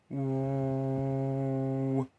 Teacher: You pronounce it by rounding your lips and bringing the root of your tongue slightly higher in your mouth. Your tongue should not touch the roof of your mouth, only be slightly higher.